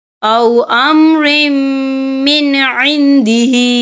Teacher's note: نون ساکن کے بعد جو ہے عین آ رہا ہے اور عین جو ہے حروف ہلکی کا ورڈ ہے تو ہم یہاں اظہار کریں گے، ہم اسے بنا غنے کے پڑھیں گے